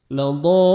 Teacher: letter ہے اس میں وہ لیٹر مشدد ہو تو کلمی مثقل، مد لازم کلمی مثقل، یعنی 5 سے 6 سیکنڈ آپ نے ایکسٹرا مد کرنی ہے · وہ مد لام کو بھی 1 سیکنڈ آپ نے کھینچنا ہے اور لاسٹ میں نون ساکن ہو جائے گا